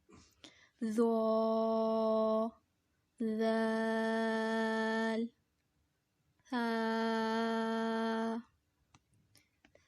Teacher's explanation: ये भी 3 हैं और इनका मखरिज भी एक ही है, तीनों एक ही जगह से अदा होंगे, यानी ज़ुबान का सिरा और ऊपर के दांतों के अंदरूनी किनारे से अदा होते हैं। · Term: हुरूफ लसविया